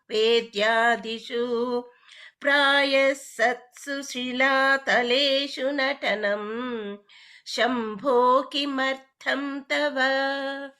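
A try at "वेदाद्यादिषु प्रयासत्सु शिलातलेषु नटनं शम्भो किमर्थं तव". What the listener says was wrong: Tava Bhagini, one, we should not be prolonging the last letters. Yeah, that we must be careful.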